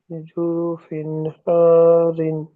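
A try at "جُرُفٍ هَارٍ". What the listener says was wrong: জি, এরকম একটা একটা করে বানান করবেন এবং একটা একটা করে যুক্ত করবেন,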